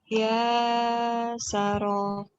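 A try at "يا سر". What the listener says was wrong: ya Sarok. Ya Sarok. Lagi latihan supaya tidak memanjangkan bacaan. Ya Sarok.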